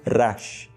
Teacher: Então a forma mais correta de nós pronunciarmos o acrônimo Rashi, se nós fôssemos ler diretamente no hebraico, é pronunciá-lo com um R forte, proveniente a partir do som da língua no céu da boca. Seria então como Rash.